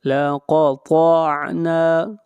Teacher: طا بھی حروف مستعلیہ میں سے ہے، طا کو موٹا پڑھا جائے گا اور نون کو کھینچ کر پڑھیں گے ایک الف کے برابر، · قاف کو موٹا پڑھیں گے، قاف حروف مستعلیہ میں سے ہے